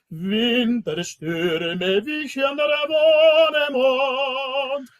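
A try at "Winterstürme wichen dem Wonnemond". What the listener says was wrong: Wischen dem Wonnemond. Dem, D-E-M. Yeah, dem. I want you to lean and I want you to give a nice little stress on Stürme. Winterstürme wischen dem Wonnemond. This dem, not der. So do it as though it were, now do it like it was French. Winterstürme wischen dem. I'm hearing the N is not singing long enough. Winterstürme. It's like Winterstürme wischen dem Wald.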